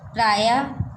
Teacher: विसर्ग का उच्चारण ह के समान होता है।